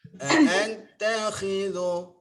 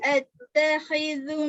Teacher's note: kha tebal dia punya tafkhim ya. Dia punya isti'la situ. Antakhidhu tu nipis.